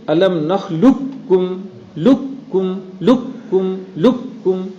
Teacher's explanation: قاف اور کاف, تو قاف کو آپ بالکلیہ بدل دیں گے کاف سے. دو کاف جمع ہوئے, پہلے کو دوسرے میں داخل کر دو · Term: تام